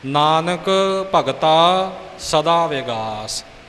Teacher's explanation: ਵਿਸਰਾਮ ਜਿੱਥੇ ਪੰਕਤੀ ਦੇ ਅੱਧ ਵਿੱਚ ਅਰਥ ਸਪਸ਼ਟ ਕਰਨ ਵਾਸਤੇ ਰੁਕਿਆ ਜਾਵੇ, ਤੇ ਜਮਕ ਜਿਹੜਾ ਉਸ ਵਿਸਰਾਮ ਦਾ ਅਰਧ ਵਿਸਰਾਮ ਹੋਵੇ। ਸੋ ਇੱਥੇ ਨਾਨਕ ਤੇ ਥੋੜ੍ਹੀ ਜਿਹੀ ਜਮਕ ਲੱਗ ਕੇ ਭਗਤਾਂ 'ਤੇ ਵਿਸਰਾਮ ਹੈ।